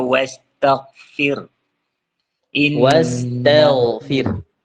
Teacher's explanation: Saya ulangin, makhrijul huruf gha. Huruf gha itu tenggorokan atas. Tenggorokan atas. Sama dengan huruf kha.